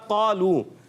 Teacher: क़ाफ पुर हर्फ है, पुर हर्फ आने की वजह से अलिफ भी पुर हो जाता है